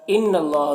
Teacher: ان اللہ نون مشدد غنہ ہوگا. یہاں پر اللہ کے لام سے پہلے نون کے اوپر زبر ہے تو اللہ کے لام کو پر پڑھیں گے. کھڑا زبر ہے، ایک الف کے برابر کھینچیں گے.